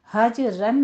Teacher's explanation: اسی طرح سے وہ جر، وہ جرو، یہ قلقلہ نہیں ہونا چاہیے، حج رن میں قلقلہ ہے، ٹھیک ہے، حج میں جیم کے اوپر قلقلہ ہے، اس کو آپ نے قلقلہ کرنا ہے، تھوڑی سی حرکت دینی ہے